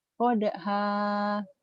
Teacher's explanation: dua Fatah ini dibaca satu jika berhenti membacanya dan ada panjangnya seperti Mad Thobi'i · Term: Mad iwad